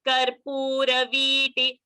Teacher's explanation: V I have held because V is Dirgha, and T I have finished off fast because T is Rasva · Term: Rasva Dirgha sound